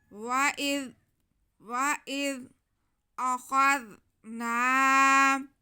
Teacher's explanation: جی، وَإِذْ واو پہ زبر، حمزہ کے نیچے زیر اور زال ساکن۔ حمزہ کو ہم زال سے ملائیں گے اور زال کو نرمی سے پڑھیں گے